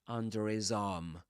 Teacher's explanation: in this accent a final R is pronounced when right after it comes um a vowel sound.